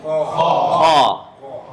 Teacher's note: حروف استعلاء میں سے اس کو موٹا ادا کرنا. وہ خے نہیں ہے, خا.